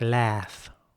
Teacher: in american english it would be more like laugh once again with an ä sound